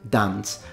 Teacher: in the north of England they tend to pronounce it dance so it's a short ah in that case